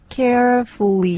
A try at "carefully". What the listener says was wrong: 네, 지금 R 발음이 안 나왔던 것이 나왔죠. 살짝 나왔죠. 네. carefully 잘했습니다.